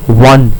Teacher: one is an exception because it sounds like it starts with a W, like one, W-O-1, W-O-N as we say.